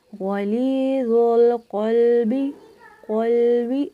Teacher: قاف موٹا ادا ہوا ہے لیکن لام باریک ادا ہوا ہے